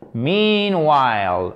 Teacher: il est sur la première syllabe ici et c'est un i long. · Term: accent tonique